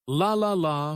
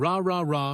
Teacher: For the L sound, the tongue touches the top of the mouth behind the teeth, but for the R sound, the tongue stays back without touching anything.